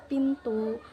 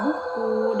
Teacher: bunyi bilabial ini dihasilkan dari udara yang dihalangi sepenuhnya lalu dilepas dengan tiba-tiba